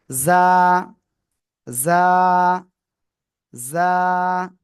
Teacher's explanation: জিহ্বার আগা, সামনের, নিচের, দুই দাঁতের পেট ও আগার সাথে লাগিয়ে জ, জ, এরকম একটু আওয়াজ হবে, ঝিঝিপ কর নাই।